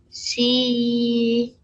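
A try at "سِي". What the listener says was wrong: Make the sound quite hard, darling, yeah? Don't make it soft. Si.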